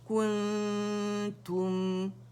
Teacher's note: میم کیونکہ اکیلا ادا کر رہے ہیں نا تو میم کی آواز چلے گی 1 کاؤنٹ کے لیے, ظاہر ہوگا